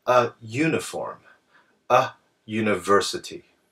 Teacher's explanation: these words actually begin with the u sound which is actually a Y sound